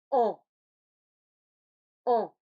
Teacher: Pour le en, je vais former un A dans ma bouche et faire passer le son par le nez. Donc, bouche ouverte, lèvres arrondies, comme pour le A, la langue un peu en arrière, comme pour le A, mais l'air passe par le nez.